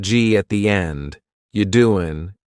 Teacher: doing yeah the word you is reduced to you you doing listen to that g at the end you doing it's gone